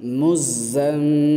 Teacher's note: মিমে তাসদীদ তাই এক আলিফ ওয়াজিব গুন্না